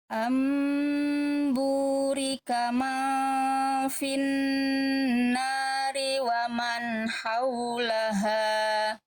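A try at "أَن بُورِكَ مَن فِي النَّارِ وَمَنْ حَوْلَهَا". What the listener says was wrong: Bagus, Masya Allah. Lanjut.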